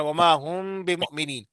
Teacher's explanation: میم ساکن کے بعد با آئے تو غنہ کے ساتھ اخفا کریں گے، اس کو اخفا شفوی کہتے ہیں.